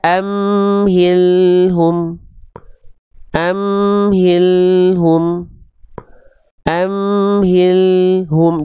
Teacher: enggak boleh memutus suara lamnya karena ada sifat huruf lam namanya tawasut